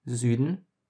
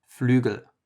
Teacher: this is basically the middle between U and E. So if you try to go slowly from one to the other, you will find that in the middle somewhere is the Ü.